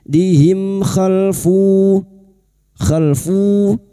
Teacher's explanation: mim sukun bertemu kha idhar safawi. Mim sukun dibaca jelas tanpa mendengung.